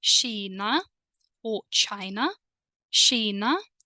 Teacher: the letter K changes into sound sh